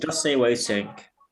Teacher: In just say what you think, the T in just can disappear.